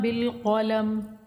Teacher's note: ادھر کسی کو نہیں کھینچیں گے بالقلم میں، قاف کو موٹا پڑھیں گے، میم پہ وقت کریں گے ساکن کر کے